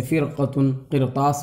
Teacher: اور اسی طرح سے جو ہے اگر را ساکن کے بعد اسی کلمے میں حرف مستعلیہ ہے تو پر پڑھی جائے گی